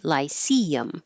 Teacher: if the stress is in the middle, the vowel is E,